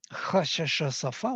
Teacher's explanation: They are voiceless frictions, or they are called also sibilants sometimes. They're hissing sounds. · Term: fricatives